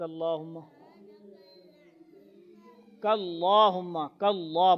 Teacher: کاللہ موٹا کریں گے اللہ کو اللہ سے پہلے زبر آ رہا ہے